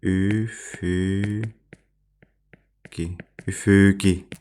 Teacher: üfüqi sözündə ikinci hecada olan sait ü saiti uzanır